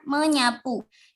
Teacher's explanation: mengalami penghilangan fonem S karena diluluhkan dengan nasal nyeh akibat pelepasan